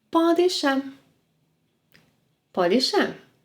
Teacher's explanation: in fast spoken Brazilian Portuguese, “Pode deixar” sounds like “Podexá”.